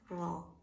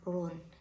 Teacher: yang ro tafhim itu akan dibaca dengan tebal ya. Saat pengucapannya memenuhi rongga mulut.